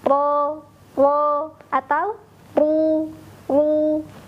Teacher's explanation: Namun huruf ro ini akan jadi beda suaranya ketika huruf ro juga beda harokatnya. Ketika huruf ro berharokat fathah atau dhammah, maka huruf ro akan dibaca lebih tebal.